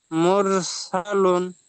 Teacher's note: লু বলে টান দিতে হবে, এটা ওয়াও মাদ্দা, লাম ওয়াও পেশ লু।